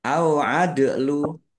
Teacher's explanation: Masing-masing dibaca panjang dua harakat. Au adlu dal sukun bacaan qalqalah dibaca memantul ditambahkan pantulannya.